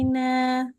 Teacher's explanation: walaupun dipercepat tapi dengung tetap tiga harakat